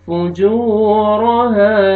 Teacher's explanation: فألهمها فجورها، واو مدہ، واو ساکن سے پہلے پیش ہے، آپ نے جیم کو کھینچنا ہے 1 الف کے برابر. فجور، را کو مرزبر ہے، را کو موٹا کر کے پڑھیں گے